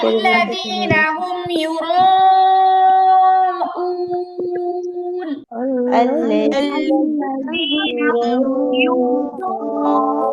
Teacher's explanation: মাদের হরফের পরের হরফে ওয়াকফ হচ্ছে তিন আলিফ টেনে পড়তে হবে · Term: মাদ্দে আরজি